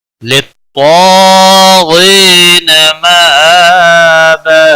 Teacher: یا مدہ ہے ایک الف کے برابر کھینچ کر پڑھیں گے · زبر ہے، ایک الف کے برابر کھینچ کر پڑھیں گے، اور وقف کی صورت میں تنوین کو بدل کر ایک زبر کے ساتھ پڑھیں گے، حروف مدہ بنتا ہے ، ایک الف کے برابر کھینچ کر وقف کریں گے، للطاغين